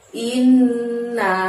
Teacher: ha di sana mengucapkannya dari tenggorokan bagian dalam, jadi agak lebih tebel